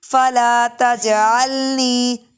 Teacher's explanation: تج قلقلہ کریں گے